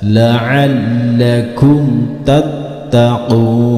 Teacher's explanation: Huruf mimnya harus dibaca jelas, tidak boleh dipantulkan dan tidak boleh didengungkan. Berikutnya setelah huruf ta yang pertama ada huruf ta yang kedua dan ada tasjidnya serta berharokat fathah.